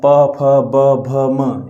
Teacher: प, फ, ब, भ, म यदि आप बोलेंगे तो आपके होठों का काम होगा। इसमें होठों पर बल जाएगा। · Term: होष्ट्य व्यंजन